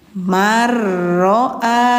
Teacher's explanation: Ini namanya idgam. Hukumnya idgam bila guna tanpa memakai dengung